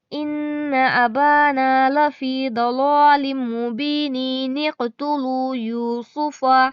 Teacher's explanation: ملا کر پڑھنے سے نون قطنی سے پہلے کا الف اور نون قطنی کے اوپر کا حمزہ دونوں ہی نہیں پڑھے جاتے۔ جب ہم اس کو ملا کر پڑھتے ہیں، نہ تو یہ حمزہ پڑھا جائے گا اور نہ ہی اس کا ایک زبر پڑھا جائے گا، ایک زبر پڑھا جائے گا، ایک زبر چھوڑ دیا جائے گا۔